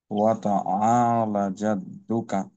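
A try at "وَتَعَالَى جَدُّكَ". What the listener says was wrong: Light টান বাদ পড়ে গেল না, দুটোটাই টান। আ, লা। এই তিনটা জায়গা খেয়াল রাখবেন। কাল, ল মোটা হবে, তারপর আ, আইন, এবং এই দুইটা টান আর কি, আলা।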